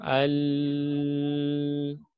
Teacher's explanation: Pita suaranya tertutup, makanya tidak ada keluar napasnya. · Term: jahar